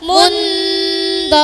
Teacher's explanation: Suara samar dan dengungnya terdengar n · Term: Ikhfa